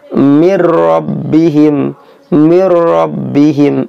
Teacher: masuk ke huruf lam atau ke huruf rok tanpa didengungkan alias tidak panjang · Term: idgham bilagunnah, idgham bila gunnah